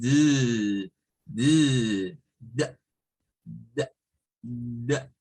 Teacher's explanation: se hace parecida a la T, pero se vibra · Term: letra D